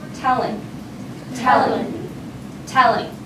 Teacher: So the emphasis, the stress is on the first part of the word, no matter what we do to it.